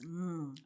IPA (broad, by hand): ŋ